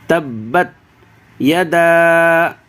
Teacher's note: یہ دال کو زیادہ کھینچنا ہے کیونکہ دال کے بعد مد ہے، الف ہے، الف مدہ سے پہلے زبر ہے اور اس کے اوپر مد ہے، لہذا اس کو زیادہ کھینچنا ہے۔